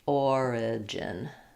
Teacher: Where you'll have more reduction there is in the gin syllable, almost no vowel there.